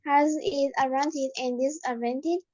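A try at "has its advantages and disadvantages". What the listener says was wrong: Remember to say S's on the end. Advantages, disadvantages, countries. I want to hear the S.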